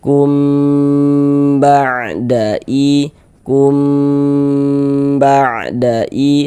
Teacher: kum sehingga di bagian kum di bagian situnya tuh suaranya itu kita tahan sejenak e kita gunahkan, kita dengungkan kira-kira sepanjang dua harakat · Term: ikhfa syafawi